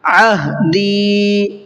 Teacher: وَأَوْفُوا بِعَهْدِي، وَأَوْفُوا کا فا کو کھینچ کر کے پڑھنا ہے، اس لیے کہ یہاں پر واو مدہ کا قاعدہ ہے۔ بعہدی، شروع میں عین ہے، اس کے بعد میں ہا ہے، عین کو الگ اور ہا کو الگ، دونوں کو ادا کرنا ہے